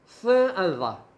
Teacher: with the tip of the tongue touching the tip of the upper teeth.